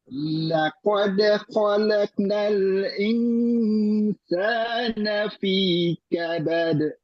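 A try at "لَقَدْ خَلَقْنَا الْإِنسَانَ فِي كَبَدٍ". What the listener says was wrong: Pantulannya ya Ustaz, pantulannya qalaqo itu ketinggalan.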